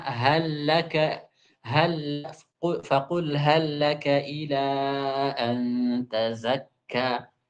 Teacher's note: lam yang ada pada hal itu diidghamkan